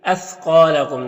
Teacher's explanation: یہاں پر الف سے پہلے قاف کے اوپر زبر ہے تو الف مدہ ہوگا۔ الف مدہ کو ایک الف کے برابر کھینچ کر پڑھتے ہیں۔ یہاں پر میم ساکن کے بعد با اور میم کے علاوہ حرف ہے تو میم اظہار شفوی ہوگا، میم کو ظاہر کر کے جلد پڑھیں گے۔